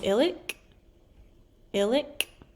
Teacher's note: this letter in the front of the word ilik is a glottal stop